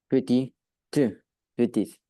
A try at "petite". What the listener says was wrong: Petite. À la différence, quand tu l'as comme ça c'est quoi? Petit et avec un E. Petite. Donc fais juste bien attention à la prononciation du mot petite.